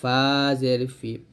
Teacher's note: ফা উপরে দুই দাঁত নিচে ঠোঁট এসে লাগাবেন